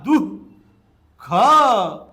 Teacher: जे दोन बिंदू तुम्हाला दिसतात या बिंदूच नाव आहे विसर्ग आणि विसर्गाचा उच्चार ह या वर्णाला झटका दिल्यासारखा होतो